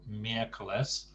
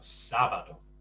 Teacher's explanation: There's a stress on the first syllable, miércoles, and on the same on Saturday.